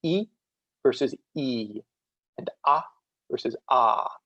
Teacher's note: the active difference really being how long you pronounce the vowel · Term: long and short distinction